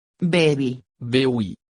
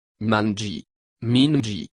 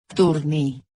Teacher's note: with a post-tonic pronunciation of the final syllable, because the emphasis is placed on the penultimate syllable